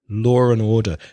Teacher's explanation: you pronounce an R when you connect them